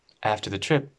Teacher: this P is not pronounced